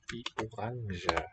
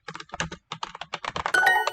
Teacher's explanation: He's got a voiced j, but not all speakers have that. You might hear it orange, I suppose.